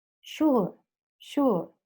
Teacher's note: it's the oo sound, short oo sound with the schwa sound. So it's uh.